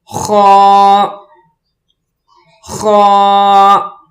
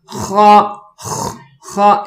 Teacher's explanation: इस लफ्ज को पढ़ने के लिए गले से आवाज निकालेंगे थोड़ी सी बीच में खराश भी हो